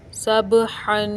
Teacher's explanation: बा हरूफ़ कलकला में से इधर बा को हिलाकर पढ़ेंगे। हा के ऊपर तनवीन है, तनवीन पर गुन्ना करेंगे। वक्फ़ की हालत में अलिफ से बदल जाएगा और तनवीन को गुन्ना के साथ भी पढ़ते हैं।